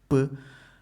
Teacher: there is a complete stoppage of air using your lips, p. That's sudden release. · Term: plosive sounds